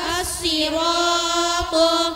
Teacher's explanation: shad dan to dibaca yang tebal dan pangkal lidahnya diangkat ke atas.